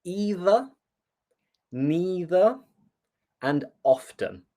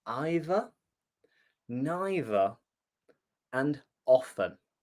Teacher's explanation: And I personally say either, neither, and often. So I pronounce the T. However, there are many people in the south of England who might say either, neither, and often.